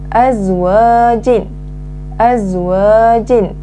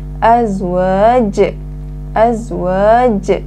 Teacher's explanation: Apabila dibaca berhenti, jim di akhir kalimah ini hendaklah dimatikan. Azwaj. Azwaj. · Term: qalqalah kubra